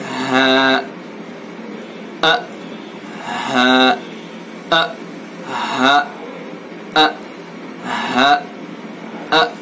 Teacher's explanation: इन दोनों का मखरज एक ही है, हमजा और हा का। हा और हमजा हलक से अदा होंगे, लेकिन हलक का आखिरी सीने की तरफ वाला हिस्सा, सीने की तरफ से ये दोनों हरूफ अदा होंगे।